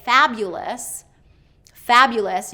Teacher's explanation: when you hear them say fabulous fabulous you can be like okay fabulous first syllable stress